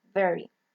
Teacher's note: We have V, that is voiced, labial dental, fricative